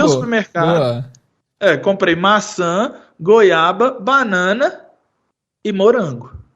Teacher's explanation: quando você joga pro fallen intonation, você põe um ponto final lá